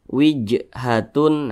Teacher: Apabila dia sukun atau karena disukunkan sebab kita berwaqaf, nah misalnya seperti itu, maka itu cara bacanya itu dipantulkan. Nah, Ini huruf jim dia sukun. Nah, berarti cara bacanya dipantulkan. · Nah, seperti itu. Dan dia tergolong kepada qalqalah sugro atau qalqalah kecil. Jadi pantulannya itu kecil saja.